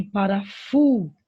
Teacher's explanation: a sílaba mais forte é o fu. Então, essas duas palavrinhas são classificadas como paroxítona, certo?